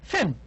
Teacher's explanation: created by bringing the lower lip close to the upper teeth Le Dental in a construction of close approximation because the air